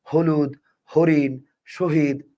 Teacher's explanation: হ যতগুলো উচ্চারণ করবেন মুখ থেকে দেখবেন বাতাস বেশি বের হবে হলুদ হরিণ শহীদ মুখ থেকে বাতাস বেশি বের হবে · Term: ঘোষ মহাপ্রাণ